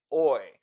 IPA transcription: ɔɪ